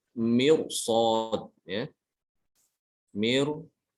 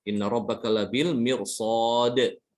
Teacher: Tipis, ya. Tapi karena setelah ro itu ada huruf isti'la, ini huruf shad, maka ini keluar daripada kaidah, ro-nya dibaca tebal.